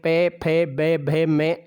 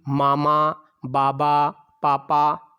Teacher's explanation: पे, फे, बे, भे, में, ये सभी ओष्ठ्य ध्वनियां हैं